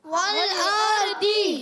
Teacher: दद अदा होता है जबान का बगली किनारा और ऊपर की दाड़ो की जड़ों से याद रखना है हा फतु लिसान यानी जबान का बगली किनारा